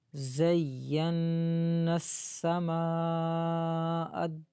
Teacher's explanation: آگے میم کے اوپر مد ہے، اس کو 5 الف کی مقدار کھینچیں گے، اور حمزہ کو آگے دال کے ساتھ ملائیں گے.